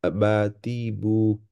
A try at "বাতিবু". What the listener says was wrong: বা প্রথম বাটা একটু টান হয়ে যাচ্ছে, হ্যাঁ, বাতিবু।